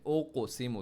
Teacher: اوقسمو، to qualities یا اس کے آپ بتا سکتے دو صفات ہیں قاف میں، قاف میں ایک تو باؤنس اور ایک تو گرین ہے، تو ہیوی بھی پڑھنا ہے